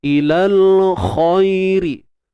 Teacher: Khairi, huruf kha tebal. Ingat huruf kha bersifat isti'la, kena tebal kha. Angkat kita punya pangkal lidah ni.